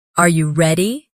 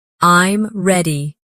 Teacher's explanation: your voice often goes up at the end of a question, Are you ready? and goes down at the end of a statement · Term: intonation patterns